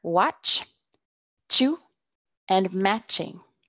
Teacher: your tongue is behind your teeth at the top but it touches the roof of your mouth to paladar and you push a short flow of air through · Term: CH sound